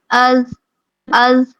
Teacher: ایسے ہی اگر ہم زال کے ساتھ اس کا مخرج معلوم کریں، از از، زال چونکہ حروف لسانیہ میں سے ہے، نرمی سے ادا کیا جاتا ہے، تو ہماری زبان جو ہے وہ ثنایا الیاء کے اندرونی کناروں کو لگتی ہے اور تھوڑی سی زبان باہر ہوتی ہے